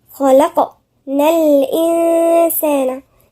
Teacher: خاء مفخمة، اللام مرققة والقاف مفخمة، وفي قلقلة